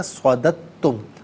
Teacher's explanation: دال کے بعد دال ساکن کا ساؤنڈ نہیں ہوگا بلکہ تا کا ساؤنڈ ادا کیا جائے گا